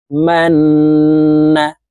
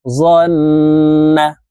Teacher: উপরে তাসদিদ আছে এই কারণে এই মিম তাশদিদ ওয়ালা নুনের সাথে নাকের বাঁশি থেকে তিন সেকেন্ড পরিমাণ গুন্না করে ধরে রাখতে হবে